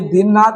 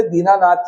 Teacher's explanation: दो ह्रस्व न अक्षरों का उच्चारण एक साथ करने की कठिनाइयों से पूर्व न दीर्घ कर दिया है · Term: दीर्घ आ